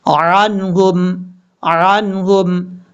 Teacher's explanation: عنہم، عین کے اوپر زبر ہے اور عین کو حمزہ کی آواز میں نہیں پڑھنا، کلیئر کر کے پڑھنا ہے